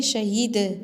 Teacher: اور دال پر قلقلہ کریں گے